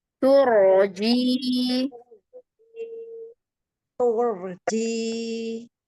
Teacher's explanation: rnya ditebalkan. Pangkal lidahnya naik.